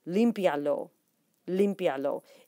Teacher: IA is considered one syllable, not two separate syllables because of the diphthong